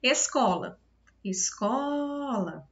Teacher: O có é a sílaba em que eu mais me demorei quando eu chamei, então ela é a sílaba tônica.